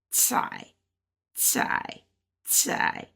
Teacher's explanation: So if this C is a T and this is a AI, like I, we're looking at tai, ta, but it's going down, so it's fourth tone